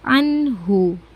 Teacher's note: di situ ada nun sukun bertemu dengan huruf ha, maka dibacanya jelas